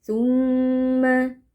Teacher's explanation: Tumma mim tasdid kita baca dengan dengung panjang